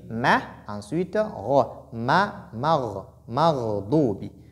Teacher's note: Et non aussi moro, non. La lettre mim est lue avec finesse. Donc, je ne dois pas suivre ghayn dans son tafkhim.